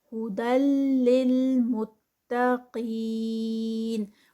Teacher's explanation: قاف ایک تو خود ہیوی ہے اور پھر آگے اس کے ساتھ ہی یا مدہ ہے، تو یہ یا مدہ کے ساتھ مل کے آگے یہ 4 کاؤنٹس کا اسٹریچ ہوگا.